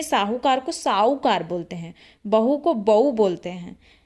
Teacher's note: तरह अलग-अलग बोलियों में अलग अलग तरह के उच्चारण होते हैं कुछ भाषा ऐसी है जिसमें हा का लोप हो जाता है